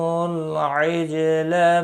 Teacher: عجل جیم ساکن پر قلقلہ ہوگا